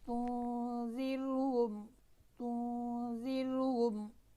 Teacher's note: را ساکن سے پہلے اگر زیر آ جائے تو پھر را کیا ہے؟ باریک پڑھی جائے گی